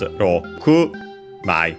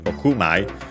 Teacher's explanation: the accent is Rokumai, so on the ku, on the last syllable of the number 6 in Japanese